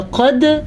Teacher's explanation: اور قد، قاف زبر دال، قد، قاف موٹی پڑی جائے گی، دال ساکن ہے تو دال پہ قلقلہ کیا جائے گا